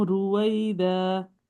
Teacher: رویدہ میں را پہ پیش ہے, تو یہ موٹی پڑی جائے گی